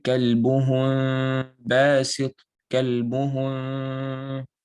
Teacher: So if there's a meme with a sukoon and the next letter is a ba, you're gonna do ikhfa al-shafawi. So you're gonna put a small gap between your lips, right? And you would do ghunna for 2 vowel counts.